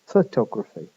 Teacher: In fact, the stress now, the main stress is on the second vowel, the one that was unstressed in photograph. For photography, the o vowel is stressed and it's pronounced o, not schwa.